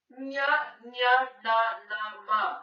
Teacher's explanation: ನಾನು ಹೇಳಿದೆ ನಿಮ್ಗೆ ನ್ಯ ನ್ಯ ನ ನ ಮ ಅಂದ್ರೆ ಅನುನಾಸಿಕ ಅಂದ್ರೆ ಮೂಗಿನ ಸಹಾಯದಿಂದ ಹುಟ್ಟುವುದರಿಂದ ಇವನ್ನು ನಾಸಿಕ ಅಥವಾ ಅನುನಾಸಿಕಗಳೆನ್ನುವರು